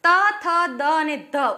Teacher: ત બોલતા જીભ દાંતના ઉપલા ભાગને સ્પર્શ કરે છે એટલે દંત્ય વ્યંજન છે